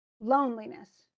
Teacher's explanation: We know lone is the big one, and it often is extended in English. So it takes a little longer to say that syllable than the other ones. I mean, Lee almost disappears.